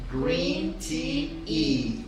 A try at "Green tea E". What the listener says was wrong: It's to move your hand forward, not like flicking water off your wrist. Green tea E.